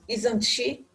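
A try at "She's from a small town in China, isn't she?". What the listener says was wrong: Intonation.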